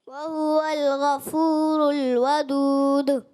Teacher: آخر میں جو دال کی آواز ہے وہ آپ کو لوٹتی ہوئی محسوس ہوئی ہے نا. تو حروف کلکلا کی ادائیگی میں یہ خوبصورتی ہوتی ہے اور یہ اس کی علامت ہوتی ہے.